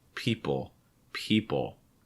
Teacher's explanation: with the top of your mouth for that l sound but this is really going to be more of a dark l where you're just kind of raising the back your tongue a little bit but actually lowering the front of your tongue so you don't need to make contact for that l sound · So you don't need to make contact for that L sound with the top of your mouth. Again, it will just sound like people, people, holding the front of your tongue down.